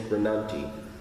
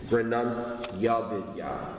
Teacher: Just have the Y blend in with the next vowel. So it'll be grinantya vidya.